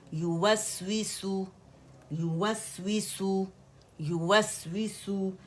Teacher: یوسوسو کو یو کر کے مد نہیں بنانا، 1 کاؤنٹ کے لیے یا دمہ یو ہے اور سین دمہ سو ہے، ٹھیک ہے.